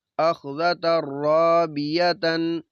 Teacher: نون تنوین ہے، بعد میں را، تو یہاں پہ بھی ادغام ہوگا، غنہ نہیں ہوگا۔